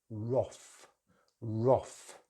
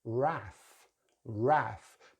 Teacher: British English uses a short vowel sound, roth, roth. Americans use the long vowel sound R, wrath, wrath.